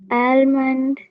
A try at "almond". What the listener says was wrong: Hmm. It is not almond. You have to actually silence the L here. Okay, L வந்து in the wordல it is silent. You have to pronounce it as almond. Okay, almond.